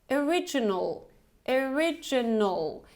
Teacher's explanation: We have this schwa sound at the beginning, so it's not o, it's original.